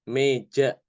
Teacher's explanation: bacaan yang bukan fathah tapi juga bukan kasroh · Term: imalah